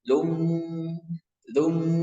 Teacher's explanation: didengungkan dulu sebanyak 2 harokat. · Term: idgham bi gunnah